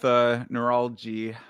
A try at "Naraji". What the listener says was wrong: Naraji. There's no L there. No L.